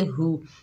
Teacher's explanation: हा के ऊपर पेश, बगैर खींचे पढ़ेंगे